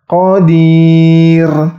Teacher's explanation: Ingat, ro-nya dibaca tipis, ro sukunnya dibaca tipis.